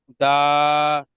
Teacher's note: ডালের ওপর খাড়া যাবার আছে। এটি একটি আলিফ মাদ্দার সমতুল্য, এটিকে এক আলিফ পরিমাণ টান দিয়ে পড়তে হবে।